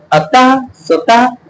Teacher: अतः जैसे आप बोलेंगे तो गले से आवाज आती है, इसलिए उसको हम कंठक स्वर बोलते हैं